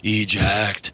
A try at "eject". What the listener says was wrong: You spelled eject wrong, by the way. You said ejact. But you just said it as eject.